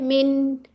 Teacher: उसमें एक नेचुरल गुना भी होता है। थोड़ी सी आपको गुना की साउंड तो आएगी।